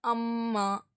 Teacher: ரெண்டு உதடுகளும் ஒட்டுன நிலையில அது வரணும் · அதேபோல அம்மா அப்படின்னு சொல்லும்போது, உங்க மூக்கின் நுனி பகுதியிலிருந்து, அந்த கீழ் பகுதியிலிருந்து உங்களுக்கு வந்து ஒரு வைப்ரேஷன் சவுண்டு வரும்.